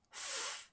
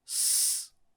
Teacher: With the first one, your tongue is just on the bottom of your front teeth. Th. And the second one, your tongue is more relaxed, not touching your teeth. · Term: th and s